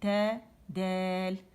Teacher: دال اور تا کی ادائیگی میں استفال اور انفتاح ہے، یعنی وہ باریک ہے